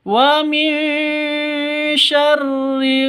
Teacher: didengungkan, siap-siap ke huruf shinnya. Wa min syarri, karena ini ikhfa hakiki.